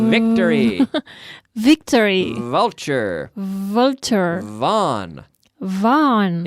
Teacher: It's a vocalized F. So we take the F, and then you activate the vocal cords.